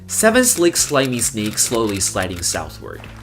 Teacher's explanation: The reason why it is very difficult is because when you are pronouncing S sound, your tip of the tongue will be right behind the front of your teeth. And then when you're pronouncing the L sound and N sound, you have to tap the front of your teeth with the tip of your tongue again.